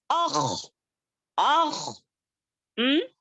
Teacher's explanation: खा जब पढ़ेंगे तो हमारे गले में खराश जैसी होगी, यानी कि खुजली की तरह होगा